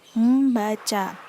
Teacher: memunculkan bunyi sengau m yang semula tidak ada